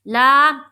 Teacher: यहाँ पर देखिए ला का जो अलिफ है वो खाली है और उससे पहले क्या है, ज़बर, तो यहाँ पर अलिफ मद्दा का कायदा हुआ। ला, एक अलिफ के बकदर खींचेंगे